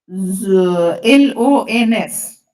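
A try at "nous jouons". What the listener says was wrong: No, not LONS, madam. It's only ONS So you have to follow the stem of the word.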